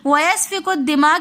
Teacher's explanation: کاف کو ہم دال کے ساتھ ملا کر پڑھیں گے۔ درمیان میں الف اور لام آ رہا ہے، ہم اس کو نہیں پڑھیں گے، کیونکہ مشدد حرف کا قاعدہ ہے کہ وہ متحرک حرف سے مل کر پڑھا جاتا ہے۔